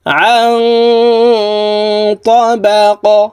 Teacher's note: তাবাকান আন তাবাক আং, এখানে ইকফাহ গুন্না, নুন সাকিনের পরে ইকফার হরফ ত আসছে, এই কারণে এই নুন সাকিনকে নাকের ভিতরে লুকাইয়া গুন্নার সহিত পড়তে হবে।